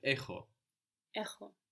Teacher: A little bit of friction in the throat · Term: ch sound